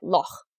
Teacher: that hard Germanic H sound doesn't appear in many modern English words, though of course you hear it in Scottish words like loch